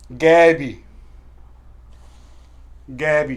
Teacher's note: آپ نے اس کا اخراج کرنا ہے حلق اور جو آپ کی ٹنگ ہے اس کی روٹ سے آپ نے اس کا اخراج کرنا ہے، اور اس کے تھوڑا سا ٹوسٹ دینا ہے، غائبی جیسے عین، اسے پر پڑھنا غائبی، یہ پر پڑھنے والا جو ہے وہ الفابیٹ ہے.